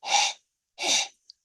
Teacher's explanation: so that you know that it's not an H sound it's it's a guttural sound it's like a heavy H like a like that like you're GNA cough almost right or